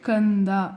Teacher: ಕಂದದಲ್ಲೂ ಅನುಸ್ವರ ಆದ್ಮೇಲೆ ದ ಅಕ್ಷರ ಇದೆ ಇದು ಕೂಡ ತ ವರ್ಗದಲ್ಲಿ ಬರುತ್ತೆ ತ ವರ್ಗದ ಕೊನೆಯ ಅಕ್ಷರ ನ ಆದ್ದರಿಂದ ಇದಕ್ಕೆ ನ ಸೌಂಡ್ ಬರುತ್ತೆ